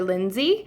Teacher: They might say the Y sound instead of the L sound.